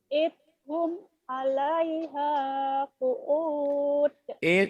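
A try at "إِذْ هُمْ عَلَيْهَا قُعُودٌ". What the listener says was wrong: Jangan idhum ya, zal. Idhum 'alaiha qu'ud.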